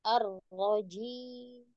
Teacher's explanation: Arnya belum getar, Arroh, bukan Arroh.